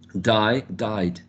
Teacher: die, I has a diphthong. Therefore, we need to add the d sound, which is voiced.